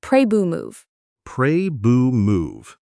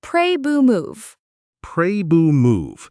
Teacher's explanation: we do not usually pop the T. We do not say boo to move. We do a held T. We stop the air in our throat.